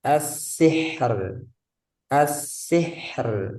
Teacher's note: Nah, haknya dia rokhawah, suaranya mengalir. As-sih, alirkan dulu baru ke ro.